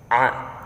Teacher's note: huruf books selanjutnya Nomor 18 yaitu a ya itu mahroji atau tempat keluarnya tenggorokan bagian tengah